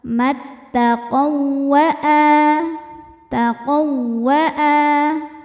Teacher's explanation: mutamilain sebab ada wau sukun bertemu dengan wau berharakat ya maka wau pertama masuk ke wau kedua tidak ditahan cukup ditekan seperti wau tasdid biasa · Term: Idam mutamilain, idgham mutamatsilain